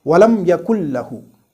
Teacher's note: the first noon sakin is completely dropped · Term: idgham